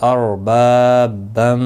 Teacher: اربابم، را ساکن سے پہلے زبر ہے اس لیے پر پڑھا جائے گا۔ با الف مدہ ہے، ایک الف کی مقدار کے برابر کھینچ کر پڑھیں گے